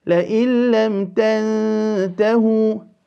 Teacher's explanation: the noon sakin followed by the ta, will give us the quality of al-ikhfa